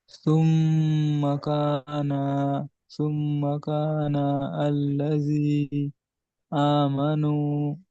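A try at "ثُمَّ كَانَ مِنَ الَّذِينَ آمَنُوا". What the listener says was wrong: আল্লাযীনা মিনাল্লাযীনা, এইদিকে মিম আছে। এখানে মিম মিন, এখানে আল্লাযীনা আছে, তো একসঙ্গে মিনাল্লাযীনা আমানু।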